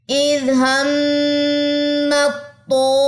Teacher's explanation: میم کی زبر کو طا سے جا کے ملانا ہے، یہاں پہ ادغام کرنا ہے اس کا